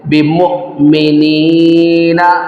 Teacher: یہاں پر حمزہ ساکن ہے، یہاں پر جھٹکا دے کر پڑھیں گے۔ بمؤمنین، آگے گول دائرہ ہے، یہ وقف کی علامت ہے، یہاں پر وقف کر دیں گے۔